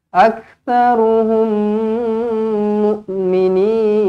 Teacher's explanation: bila jumpa dengan mim sabdu, automatik terus kita rapatkan bibir, dengungkan 2 harakat. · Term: idgham mislain